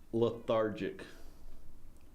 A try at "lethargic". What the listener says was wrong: That sounds like you had something on your tongue. Like your tongue is numb.